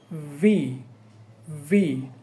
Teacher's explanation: এটার উচ্চারণটা হলো উপরের দাঁতের সাথে নিচের ঠোঁট লাগবে ভি, ভি।